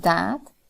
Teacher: T and d, they are substituted for th and the